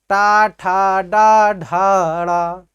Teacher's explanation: आपकी जिह्वा कहाँ जा रही, ऊपर जा रही, इसी कारण से इसका उच्चारण स्थान क्या हो गया, मूर्धा हो गया